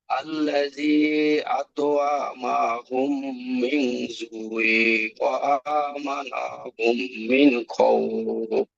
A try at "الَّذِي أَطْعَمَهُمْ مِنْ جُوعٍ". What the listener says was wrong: এই ভুলটা অনেকে দিচ্ছে যে আল্লাযী আত'আমাহুম, আইন টান হবে না, আত'আমাহুম মিন জু'ইন। আত'আমাহুম,